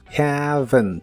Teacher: la a de have es un sonido vocal que es una combinación de la e y la a digamos que son los sonidos e a juntos Haven la v